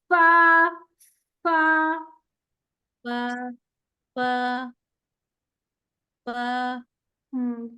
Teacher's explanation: एफ जब बोलते हैं तो देखिए मुंह से एयर बाहर आती है, आती है। जी जो जी जो जी मुंह से जो हवा सांस बाहर आ रहा है वो पहले महसूस करें फिर फा को पढ़ें।